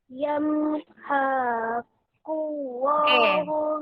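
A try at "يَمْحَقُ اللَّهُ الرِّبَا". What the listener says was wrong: Okey, dekat sini ha tak panjang. Riba. Okey, ikut saya baca dengar dulu Yamhaqullah. Yamhaqullah riba. Riba. Okey, dekat sini kalimah Allah kena panjang.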